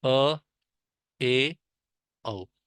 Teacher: आपका जो मुख होगा इन स्वरों का उच्चारण करते हुए आधा खुलता है, मतलब उससे ज्यादा, थोड़ा विपरीत से थोड़ा सा ज्यादा खुलेगा। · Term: अर्ध विपरीत